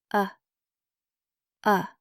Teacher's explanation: That's the schwa sound. The softest vowel in English. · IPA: /ə/